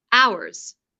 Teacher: For example, here he says hours with an H sound at the beginning, whereas the correct pronunciation is to start with the ow vowel sound, hours. Have a listen.